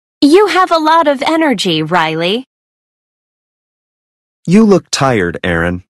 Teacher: There is usually falling intonation and a pause before the name.